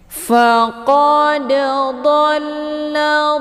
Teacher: dalnya dipantulkan dengan pantulan ringan sehingga terdengar suara bunyi de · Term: qalqal sughra